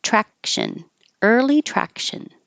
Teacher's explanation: Traction, the C is really a K, so you do put your tongue in the K position, track, but you don't release the K noise